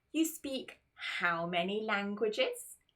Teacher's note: you want to use your Rising intonation to make sure that people know it's a question